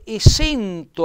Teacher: lui mette l'accento fonico chiuso quindi lui dice e sento allora scampa nard eva che quindi